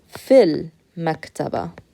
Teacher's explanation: So here we have a meme. You use your lips to pronounce meme. You don't use your tongue. Therefore, it is a sun letter.